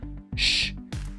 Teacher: Entonces veo el sonido original final, sh, no tiene voz, no hay participación de mis cuerdas vocales